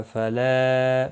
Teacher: فلا مد منفصل ہے، تین الف کے برابر کھینچ کر پڑھیں گے